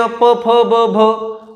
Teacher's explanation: प, फ, ब, भ, ओठाला ओठ टच होतात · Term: ओष्ठवर्ण